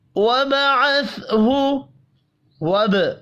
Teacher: با ساکن پر قلقلہ کریں گے، سا ساکن قلقلے کے بغیر پڑھا جائے گا۔